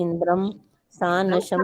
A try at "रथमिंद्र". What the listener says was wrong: रथमिंद्र, इंद्रम नहीं है, बिंदु नहीं है। रथमिंद्र, रथम इंद्र, इंद्रम नहीं है। पहले भी 2-3 ऐसे बोला था। इंद्रम शब्द नहीं है, बिंदी नहीं है ऊपर।